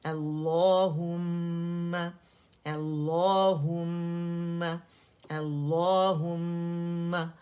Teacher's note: حمزہ فتح آئے، او کی آواز نہیں آنی چاہیے